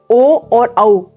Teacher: ओ और औ कंठ और ओष के संयोग से बनते हैं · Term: कंठ होष स्वर